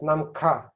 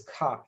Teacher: So it's nam ka as opposed to ka, which is the mouth is ka. It's kind of soft, but it's very aspirated.